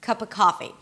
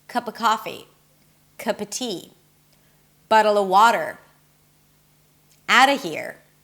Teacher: So not only I reduced the ah sound to a schwa, but I also dropped the v completely. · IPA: /kʌpə ˈkɑfi/